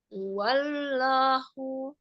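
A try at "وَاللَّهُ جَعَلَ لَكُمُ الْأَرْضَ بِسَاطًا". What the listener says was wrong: jangan diangkat suaranya, jangan diangkat, jangan diangkat. Aja wallahu alisan sebagai suara lam. Wallahu ini karena umum diangkat wallahu diangkat, jadi seperti itu bacanya. Ya, datar saja.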